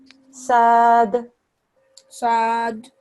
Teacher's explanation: The dal, when it becomes a sakin dal, becomes a kalkala sound. Okay? Whenever you've got a sakin dal, you have to do a bit of kalkala.